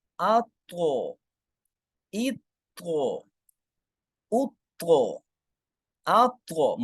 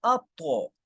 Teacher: موٹا کر کے پڑھیں گے اور قلقلہ کریں گے، یعنی آواز لوٹ کے آئے گی۔ اگر ہم یوں پڑھیں اب غلط ہو جائے گا، اطغى۔